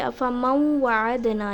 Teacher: افمن وا نہیں پڑھیں گے بلکہ افمن وعدنا، یعنی میں نے نون اور واو کو مکس کر کے پڑھا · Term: ادغام